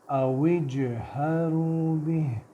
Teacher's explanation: قلقلہ کریں گے، باؤنس کریں گے آواز کو